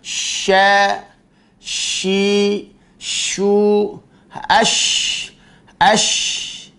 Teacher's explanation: Sin ujung lidah mengenai ujung lidah mengenai gigi seri bawah. Sedangkan shin yang titiknya 3, lidah bagian tengah mengenai langit-langit yang sejajar dengannya. Maka jalankan ketika mengucapkan huruf shin, jangan terburu-buru.